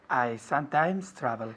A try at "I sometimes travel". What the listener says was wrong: Con la M, I sometimes. Muy bien, quiero ver los labios juntos. I sometimes travel, no sometimes. Sometimes, las dos M's. I sometimes travel.